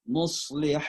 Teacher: Ha dan ain itu satu tempat keluar. Jadi tenggorokan tengah.